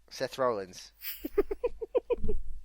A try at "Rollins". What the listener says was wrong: You emphasise the roll bit. Rollins. It's Rollins.